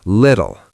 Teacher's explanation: First L is light. Second L is dark. And the T's in the middle, in America, they are flap T's.